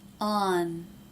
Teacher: it's pretty clear that the tongue tip is raised touching the roof of the mouth